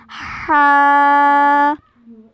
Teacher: हलक के दरमियानी हिस्से से हा अदा होता है